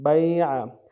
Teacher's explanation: عین کو گہرائی سے ادا کریں گے